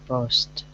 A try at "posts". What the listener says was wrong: Posts. Really close. Just try to get that last S at the end. Posts.